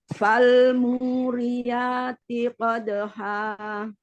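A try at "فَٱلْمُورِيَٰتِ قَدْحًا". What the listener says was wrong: Nah, T-nya tipiskan dulu. Yati qadha. T-nya bunyinya sampai T sampai I. Jadi tadi setiap T itu nggak bunyi T gitu. Jadi fal muriyati qadha.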